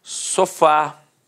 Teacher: Repare que a sílaba tônica é a última e é terminada de fato em A.